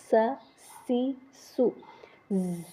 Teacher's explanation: اس کو سیٹی کی آواز میں پڑھیں گے